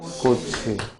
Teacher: 음음 변동이 일어난 게 아니고 뭐라고 설명을 하냐면 연음됐다라고 말을 하고 연음됐다라고 말을 한다는 이유는 즉 받침의 치읓이 뒤에 첫 소리로 옮겨간 거야